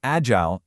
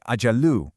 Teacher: The instructor points out the letter jeem in this word and explains that's where you apply the qalqalah. So, it's not a flat agile, it's more like ajalu with that little reverberation on the J sound.